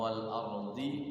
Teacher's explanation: Tipis kalau wal ardi tebal rohnya karena sebelumnya fathah